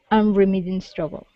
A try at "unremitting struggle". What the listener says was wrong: Good, good.